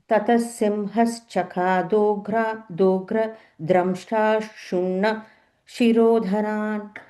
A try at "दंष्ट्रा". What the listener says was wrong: Even on the first line, like you're saying dra, it is a da. Damshtra.